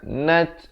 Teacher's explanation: nat ada bunyi angin, bunyi hamasnya pada huruf ta